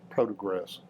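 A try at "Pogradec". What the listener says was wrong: No. No. Podadech. It's a TZ on the end. Pogradets. keep wanting to put a PRO at the front. That's incorrect. Pogradets. The R is in the second syllable.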